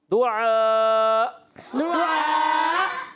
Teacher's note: آخر میں حمزہ ہے، حمزہ ساکنہ کو خوب ظاہر کریں گے جھٹکا